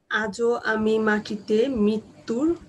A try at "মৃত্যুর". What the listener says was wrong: নগ্ন, এই যে দেখেন মৃত্যুর মৃত্যুর বলছেন সেটা হয়ে যাচ্ছে মৃত্যুর, রিকারটা লাগছে না, রিকারের উচ্চারণটা হচ্ছে না, ওটা ইকারের উচ্চারণ হয়ে যাচ্ছে, এটা মৃত্যুর হয়ে যাচ্ছে, মৃত্যুর হচ্ছে না। মৃত্যু বলতে গেলে আমরা যদি ইংরেজিতে বলি এম আর একসাথে থাকলে আমরা কি উচ্চারণ করি, এম আর আই যদি হয় সে উচ্চারণটা কিরকম করব, মি না মৃ, মৃ তাই না?